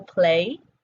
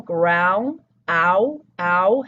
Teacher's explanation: in playground, the first syllable, play, [eɪ] , [eɪ] has a diphthong. And the second syllable ground, [aʊ], [aʊ] has a diphthong.